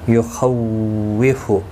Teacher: اس کے اوپر کھڑی زبر بھی ہے، ایک الف کی مقدار کے برابر کھینچ کر پڑھیں گے. یخوف، خا مستعلیہ ہے پر پڑھا جائے گا · او واولین ہے تھوڑا نرمی کے ساتھ کھینچ کر ادا کریں گے